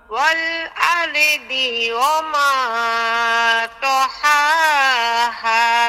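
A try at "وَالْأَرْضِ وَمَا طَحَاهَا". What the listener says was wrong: রয়ের উচ্চারণটা ক্লিয়ার হয় নাই।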